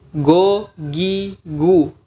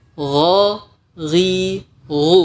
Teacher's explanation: Karena makhraj atau tempat keluar huruf G dalam bahasa kita itu bukan pangkal tenggorokan, tapi pangkal lidah.